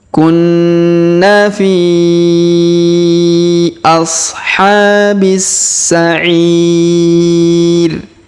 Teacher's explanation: huruf B langsung sambung ke huruf Sa berharokat tasdid